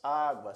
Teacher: na palavra água primeiro vem a semivogal u e depois a vogal a por isso é um ditongo crescente